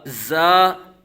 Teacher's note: سختی سے پڑھیں گے اس کو، سیٹی کی طرح تیز آواز اس کی نکلے گی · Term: حروف صفیریہ